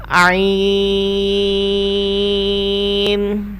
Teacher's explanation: اگلے حرف پر بڑھتے ہیں۔ یہ بھی ہا کی طرح حلق کے درمیان والے حصے سے ادا ہوتا ہے